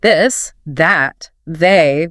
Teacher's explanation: the voice th in words like this that they where you feel vibration in your throat like a buzzing